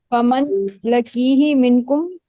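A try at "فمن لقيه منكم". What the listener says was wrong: لکی نہیں، فمن لاقیہ. لاقیہ یلقا.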